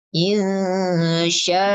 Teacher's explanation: akhirnya agak di rem mendadak karena akhirnya itu pakai hamzah.